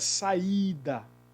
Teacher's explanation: I, na maioria das vezes, é semivogal, mas aqui o I ele está acentuado. E por estar acentuado, ele tornou-se um elemento tônico forte. Então, na palavra saída, nós temos aí a separação, porque o A ele é vogal, e o I, que é a expressão, o som mais forte, né?